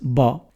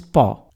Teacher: The difference between a b sound and a p sound is not actually very great. Both are bilabial sounds. But when these sounds are part of a language like English, they are used in such a way that the occurrence of one rather than the other is meaningful.